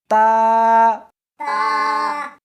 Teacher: اس حرف کو زبان کے اوپر کے تالو سے ملا کر پڑھیں گے